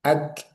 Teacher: Syiddahnya itu 60%, Hamasnya 40%. Jadi lebih dominan Syiddah dulu, jangan oke, jangan langsung dilepas gitu ya.